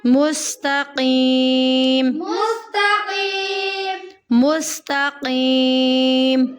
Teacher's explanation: قاف کو یا کے ساتھ ملاتے ہوئے قاف کو ہمیں پر پڑھنا ہے، موٹا پڑھنا ہے. کیم کی آواز نہیں آئے گی. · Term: موٹا کاف